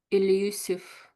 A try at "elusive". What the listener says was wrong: Yeah, that's it. Elusive.